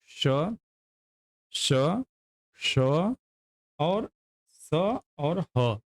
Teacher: ये संघर्षी व्यंजन के अंतर्गत आते हैं